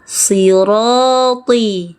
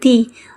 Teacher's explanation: tetap tebal juga, jangan ti, angkat pangkal lidahnya